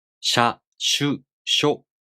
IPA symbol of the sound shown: ɕ